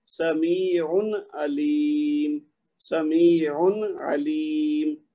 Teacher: اس کو لمبا نہیں کرنا، غنہ نہیں کرنا، عین کی جو تنوین ہے اس کو ظاہر کرنا ہے